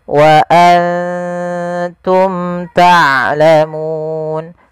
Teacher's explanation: izhar artinya jelas syafawi berkenaan dengan bibir karena makhraj daripada huruf Mim daripada bibir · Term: izhar syafawi